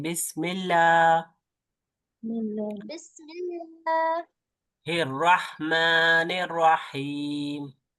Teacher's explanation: बिस्मिल्लाह में लफ्ज अल्लाह को हम बारीक पढ़ते हैं